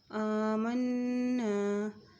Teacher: میم نون کے اوپر شد ہے تو یہاں غنہ کرتے ہوئے پڑھیں گے۔ الف کے اوپر کھڑی زبر ہے، اس کو تھوڑا سا ایک حرکت ہم لمبا کر کے پڑھیں گے۔